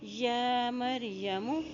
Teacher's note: یا کے پر کھڑی زبر ہے، ایک حرکت اس کو لمبا ادا کریں گے